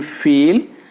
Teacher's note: This is a long vowel, but the length is reduced before voiceless consonants. The three-term formula of vowel E is front, close, unrounded. · For the production of E, what happens in the mouth? The front of the tongue is raised to the close position. · The position very close to the roof of the mouth. The tongue is at tense. The lips are spread. That means lips are unrounded.